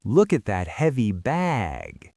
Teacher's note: bag is the last word before I pause, that's when the vowel really expands.